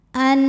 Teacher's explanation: sukun menghadapi huruf halqi atau huruf tenggorokan yaitu Hamzah cara membacanya nun sukun dibaca dengan jelas bunyi n dan tidak perlu ditahan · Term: izhar halqi